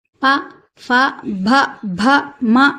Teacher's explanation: ఓష్ట్యములు, అంటే పెదవుల సహాయంతో పలకబడుతున్నాయి అన్నమాట